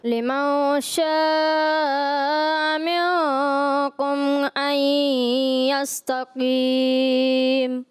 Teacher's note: انہوں نے لمن شاء آ تھا، اس میں حمزہ زبر آ، اس کو حذف کر دیا